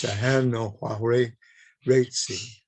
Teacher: Now, when you see an SH written in Wendat, it's not, in this case, it's not a sh, it's a s followed by a h